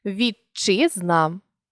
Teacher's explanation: якщо перед шиплячим стоїть звук Д чи т то у вимові він зникає і з'являється подовжений шиплячий